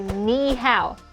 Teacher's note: And for some American Chinese language learners, N could sound a bit too nasal